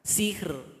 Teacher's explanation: Jadi getaran dari huruf ro itu bermain di belakang gigi kita. Sihr. Jadi tidak boleh dibantu dengan bibir. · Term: tipis